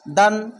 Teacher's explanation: ইজাহার গুন্না বলতে স্পষ্টভাবে দান এভাবে কোন টানটুন কিচ্ছু হবে না